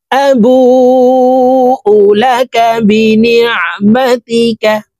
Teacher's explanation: এই বু এখানে 4 আলিফ টেনে পড়তে হবে, কারণ মদের হরফের উপরে মোটা চিহ্ন বামে হামজা, মধ্যে মুত্তাসিল 4 আলিফ টানিয়া পড়িতে হয়।